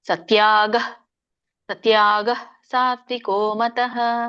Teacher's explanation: ವಿಸರ್ಗ ಉಚ್ಚಾರಣೆ ಮಾಡಬಾರದು ಪ್ರಶ್ವಾಸ ಬಿಡಬೇಕು